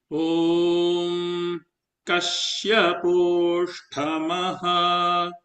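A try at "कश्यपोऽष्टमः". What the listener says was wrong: Not tha. Ashtama. Ashtama, not tha. No mahaprana. Kasyaposhtamaha.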